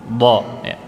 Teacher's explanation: Jadi letak huruf bo itu di tepi lidah, ditempelkan ke geraham atas. Boleh bagian kiri, boleh juga bagian kanan, atau mungkin bisa juga kedua-duanya.